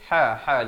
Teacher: ha di pertengahan kerongkong